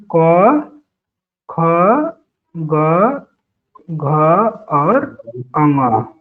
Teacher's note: तो गले से बोलने वाले में पूरा क वर्ग है, क वर्ग